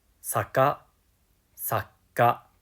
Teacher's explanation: Notice how with sakka, we add a short pause in the middle of the word. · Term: double consonants